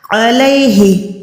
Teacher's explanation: عین حلق کے درمیان والا